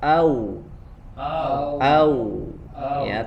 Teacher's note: kalau wow dia melibatkan kedua bibir tapi tidak dirapatkan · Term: huruf Waw